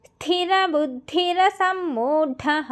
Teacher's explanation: స్థిరాలో స కి తకారము మహాప్రాణం అండర్లైన్ చేసుకోండి బుద్ధిలో ద కి దకారము మహాప్రాణం